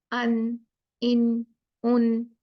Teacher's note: लेकिन इजहार में गुन्ना नहीं होगा, उसमें सिर्फ नून को हमने क्लियर पढ़ना है। नून में ऑफ कोर्स अपना गुन्ना है, लेकिन वो बड़ा हुआ गुन्ना तो नहीं है ना।